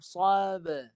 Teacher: Ba mati dengan pantulan ke arah baris bawah.